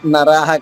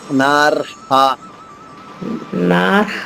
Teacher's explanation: ర పొల్లుగా చెప్పాలి హ దీర్ఘంగా చెప్పాలి